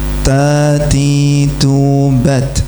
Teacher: gak boleh melet kan nempel di pangkal berarti ketutup oleh gigi sari. Kalau ada orang baca ta kok ilat ketok berarti pasti salah ya kan harusnya ketutup oleh gigi sari kecuali kalau gigi sari atasnya sudah berguguran.